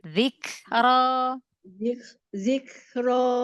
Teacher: kafnya jangan dilepas dari makhrajnya. Renggangkan aja biar dapat hamesnya.